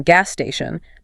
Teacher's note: Or if the next word also starts with an a's, like in gas station, the 2 sounds merge. You don't hear gas station, you just hear 1 long hissing sound. It gets compressed.